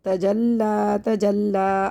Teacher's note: یہ لام میں نے باریک پڑھا ہے کیونکہ یہ لام لفظ اللہ یا اللہم کے لام کے علاوہ ہے، یا ایکسٹرا ہے، اس کو ہم نہیں پڑھیں گے۔